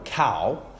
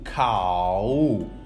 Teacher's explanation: the second example cow we feel it that we have actually a combination of two vowels it's like you are saying actually ah then ending by oh